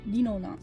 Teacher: You just need to like make it into li, but then Japanese li is like a mixture of L, R, and D